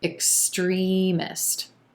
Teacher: our emphasis is on the second syllable and the e as in green vowel sound